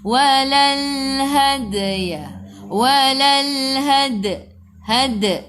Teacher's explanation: Kena melantun qalqalah sughra, lantunannya kecil.